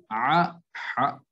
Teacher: حلق کا دوسرا حصہ جو درمیانی حصہ جسے وسط حلق کہتے ہیں، وہاں سے عین اور ہا یعنی ہا ادا ہوتا ہے